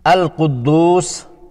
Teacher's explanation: القدوس میں حرف قاف مستعلیہ ہے جو کہ موٹا پڑھنا ہوتا ہے۔ اس کا مخرج زبان کی جڑ اور تالو کا نرم حصہ ہے۔ دال پر پیش ہے اور بعد میں واو ساکنہ ہے، یہ دونوں واو مدہ ہیں، 2 حرکات کی مد دے کر ادا کریں گے۔